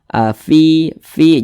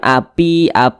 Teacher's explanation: ketika kita mengucapkan huruf Fa itu ada nafas yang mengalir